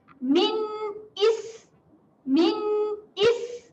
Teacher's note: Ataupun bahasa mudahnya sifat berangin. Okay, jadi untuk bunyi sin bertanda sukun ini, kita keluarkan angin. Is, pastikan ada angin yang keluar. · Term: sifat hamas